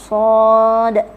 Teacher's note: Huruf sad ini dia adalah sifat safir dan dia tebal.